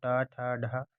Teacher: तो टा ठा ढा ये तीनों मूर्धन्य ध्वनि है